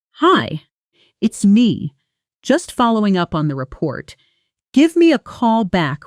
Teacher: Notice how give me a call often becomes gim a call in fast, casual speech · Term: connected speech